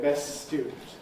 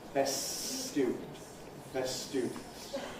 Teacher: So rather than saying ˈbest ˈstjuːdn̩t, which is difficult, we say ˈbes ˈstjuːdn̩t with a long s · we say best student, with a long S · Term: elision